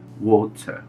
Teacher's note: o t ele é mais pronunciado e o r ele deixa de existir ele passa a ser uma extensão do som da última vogal